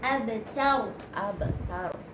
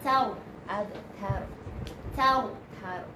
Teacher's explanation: Ta tu nipis, ra tu tebal.